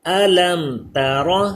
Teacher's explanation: میم ساکن کے بعد تا آ گیا تو یہاں پہ اظہار شفوی ہوگا. جی یہ قاعدہ ہم نے پڑھا تھا کہ میم ساکن کے بعد اگر با اور میم کے علاوہ کوئی حرف آ جائے تو وہاں پہ اظہار شفوی ہوتا ہے.